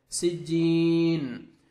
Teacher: جیم یا مدہ ہے، 1 سیکنڈ جیم کو کھینچنا ہے اور سٹاپ کریں گے، نون کو مجزم آ جائے گی، نون ساکن ہو جائے گا